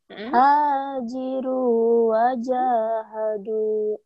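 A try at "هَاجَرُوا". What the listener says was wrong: Itu berbaris fathah ja-nya.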